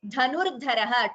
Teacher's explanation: two mahapranas here dha and dha